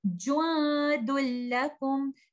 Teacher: noon sakina hidden in tanween is completely merged into letter lam. Nothing is left from letter noon sakina, and this is called complete merging.